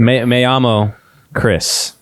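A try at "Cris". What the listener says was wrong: You got to roll your R's, man. It's Crease. Crease.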